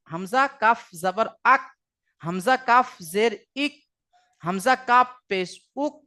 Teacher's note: তাহলে কাফের মাখরাজ হয়ে গেল 5 নম্বর মাখরাজ, যে জিহবার গড়া হইতে একটু আগে তার বারবার উপরের তালুর সাথে লাগিয়ে উচ্চারিত হয় কাফ